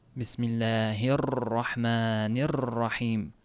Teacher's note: ro harfida o't ko'p til qaltirab ketishi bo'lyapti · Misol uchun bismillahirrohmanirrohim deb o'qilinadigan joyida bismillahirrohmanirrohim e'tibor bergan bo'lsangiz ro harfida o'ta ko'p qaltirab ketishi bo'lyapti. Mana shuni takrir deydi. Ar-rohmanirrohim bo'p roga o'ta ko'p qaltirash berilmaydi.